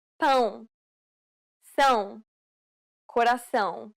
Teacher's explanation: It is similar to the ow sound in English, but with nasality. Saying the word pound repeatedly may sometimes help with pronouncing this sound.